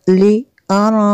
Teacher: نون ساکن کے بعد فا ہے حروف اخفا میں سے، یہاں پہ اخفا ہوگا اس لیے یہاں پہ غنہ کریں گے۔